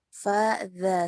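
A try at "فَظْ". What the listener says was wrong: Kalau za yang sukun jangan sampai dia tebal. Senyum lagi.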